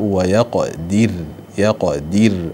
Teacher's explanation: يقدر الراء هنا أيضا مرققة لأنها سكنت وقفا وقبلها مكسور ومع أنها يعني مضمومة وصلا.